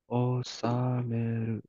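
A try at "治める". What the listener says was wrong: Hi, osameru. Perfect.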